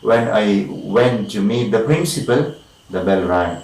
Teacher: First part, when I went to meet the principal, it's in, of course, rising tune. When I went to meet the principal, the bell rang. Second part is in the falling tune. First part is the rising tune.